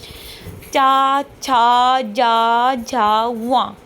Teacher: फिर जो चा वर्ग में जो वर्ण आएंगे वो सभी हमारे तालु से बोले जाते हैं